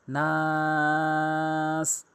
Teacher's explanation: ওয়াকফ করলে 3 আলিফ টেনে পড়তে হবে